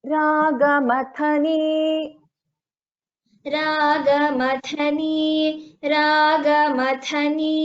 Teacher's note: Nirupadhir, here dha is a mahaprana, and in second line, that is third pada, ragamathani, tha is a mahaprana